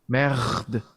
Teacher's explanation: I think it's the uvular fricative. So the flipped R that you see.